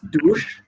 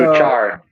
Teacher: in Spanish you don't have a sh sound, so you replace it with a ch sound